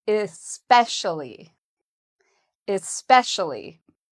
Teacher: So the second syllable has the stress.